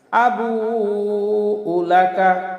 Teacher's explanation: আবুতে চার আলিফ টান আছে